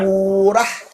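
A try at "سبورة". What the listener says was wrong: Très bien. On a une championne.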